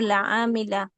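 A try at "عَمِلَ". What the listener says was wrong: আপুর শুরুটা টান হয়ে যায়, টান হবে না আবার। আইন জবর আমিন জের মি আমি, আমিটা যেভাবে বলছেন ওইভাবেই থাকবে, লাম জবর লা উচ্চারণ হওয়ার পর ওইভাবে থাকবে। হ্যাঁ, আইন জবর আমিন জের মি আমি, লাম জবর লা আমিলা।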